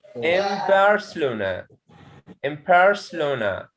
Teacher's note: barcelona so nothing changes into ma before this is a rule if you find na sound okay and it's followed by ba sound okay so it changes into ma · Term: assimilation